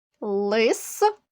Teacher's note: останній приголосний звук с ми вимовляємо твердо тому він позначений у звуковій схемі однією рискою лосью останній приголосний с ми вимовляємо м'яко у звуковій схемі він